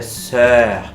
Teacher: É um O, você faz uma boca de O, mas você produz um E.